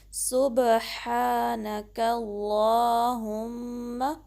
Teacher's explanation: ہا کو درمیانے حلق کے حصے سے نکالنا ہے، وسط الحلق سے، اور 2 کاؤنٹ اسٹریچ کرنا ہے، ٹھیک ہے۔ اللہ، نون کو باریک رکھنا ہے، کاف کو بھی، یعنی کا نہیں بلکہ کا۔